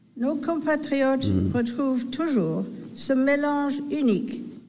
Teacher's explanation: So this on from Compatriot, I can feel a little M, but really it's so subtle